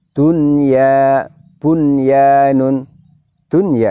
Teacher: dimana nun sukun nya tetap dibaca jelas